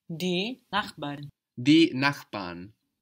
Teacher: This is spelled N-A-C-H-B-A-R. It ends in a consonant. It doesn't sound like a consonant though. It sounds like an A, no?